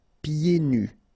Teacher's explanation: so you don't hear the D.